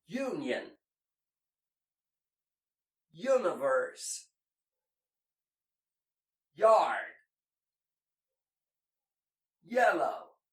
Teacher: Well, the Y in English is never made long as the I in Portuguese. It's always fast as the I in saia. Note that you never split the syllables in saia like saia, or else it sounds like something else.